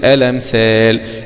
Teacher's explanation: فهنا اللام هنا حكمها الإظهار، لا مظهرة قمرية، ووقع بعدها حرف ميم، والميم من حروف ابغي حجك وخف عقيمة. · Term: لام مظهرة قمرية